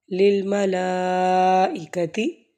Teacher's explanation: لام پر دیکھیں کھڑی زبر بھی ہے اور مد بھی ہے تو 4 حرکات پڑھیں گے